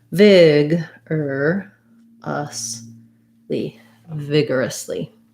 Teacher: i'm going to mark the er sound as a schwa and an r